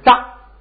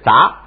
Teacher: 头发的是扎，是一声，这个声音是杂，是二声